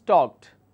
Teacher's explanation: it's not a du sound ending it's a t sound ending